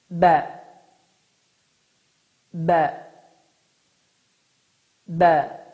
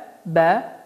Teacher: dodaqların yaş hissəsini bir-birinə möhkəm bir şəkildə vurmaqla, hava axınını dayandırmaqla